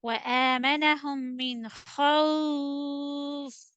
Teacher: Double kasra will drop in stop condition.